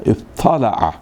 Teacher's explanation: تو تے اور تو کو ادغام کر کے طا کو مشدد کر دیا